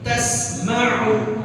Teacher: Tasma'u jangan diganti dengan hamzah. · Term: ain